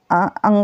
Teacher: इसमें कंठ और नासिका दोनों की मदद ली जाती है